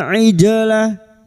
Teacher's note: Aijalah huruf ain aijalah jim sukun yang mati asli di tengah kalimat qalqalah sugro, jangan lupa dipantulkan